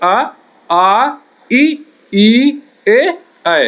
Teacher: जिन स्वरों के उच्चारण में ओठों का आकार गोल नहीं होता है उन्हें अवृत्ताकार स्वर कहते हैं